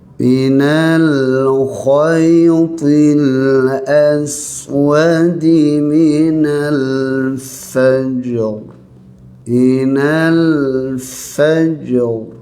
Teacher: Ra kena tebal ya. Ketika waqaf ra tebal. Ketika berhenti ra tebal. Kalau kita teruskan bacaan ra nipis ya.